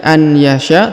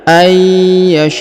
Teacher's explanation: huruf nun sukunnya menghilang melebur ke huruf ya yang bertasdid jadi tidak dibaca lagi